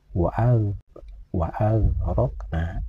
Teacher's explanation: Huruf gin sukun ini tidak boleh dibaca memantul seperti bacaan qalqalah, karena huruf gin sukun ini bukanlah qalqalah.